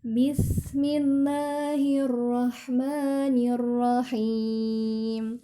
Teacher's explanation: sinnya dialirkan ya. Jangan dihentak, jangan bis ya, tapi dialirkan.